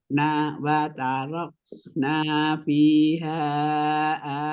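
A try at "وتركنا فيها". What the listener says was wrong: Ulangi mi fiha hannya panjang ya? Empat ya.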